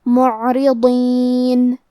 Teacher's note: کلمت معرضین میں یہاں عین ساکن ہے لہذا ہمیں عین کو ظاہر کرنا ہے. ضاد کی ادائیگی زبان کے کروٹ اور اوپر کے داڑھوں کی جڑ سے ہے. حرف الضاد حروف التفخیم میں سے ہے تو ہم یہ حرف کو بھاری آواز میں پڑھیں گے.